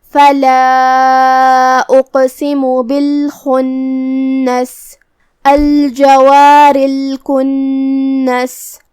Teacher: کلمت الجوار کے آخری میں را کے نیچے زیر ہے تو ہم را کو ہلکی آواز میں ادا کریں گے، یہاں را کا حکم ہے ترقیق